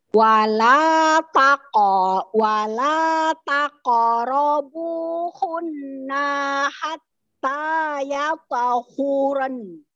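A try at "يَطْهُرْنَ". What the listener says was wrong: Hur. Ya, ro-nya tebal dulu, Bu. Ro-nya tebal, hur. Ro-nya tebal, ya, hur.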